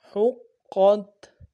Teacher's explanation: مرو، ربی، مدت، حا قاف پیش حق، حا کو گہرائی سے پڑھیں گے، قاف موٹا حرف ہے، موٹا کریں گے، قلقلہ بھی ہے تو قلقلہ بھی کریں گے